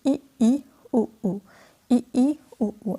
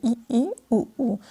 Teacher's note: जिन स्वरों के उच्चारण में मुख्य द्वार लगभग बंद रहता है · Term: संवर्ध